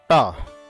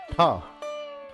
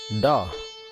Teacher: श तथा ट वर्ग इत्येषाम् उच्चारणं मूर्धया भवति।